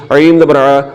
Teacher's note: جو عین ہے اس کو بھی حلق کے درمیان والے حصے سے نکالنا ہے